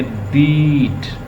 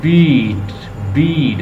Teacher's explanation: Front vowel mean कि हमारी टंग जो पोजीशन की टंग की पोजीशन है उसमें हमें ये फील होगा। अगर मैं ये साउंड प्रोड्यूस करता हूँ, जैसे बीट, ये मेरी ज़बान जो है उसकी फ्रंट पोजीशन से ये निकल रहा है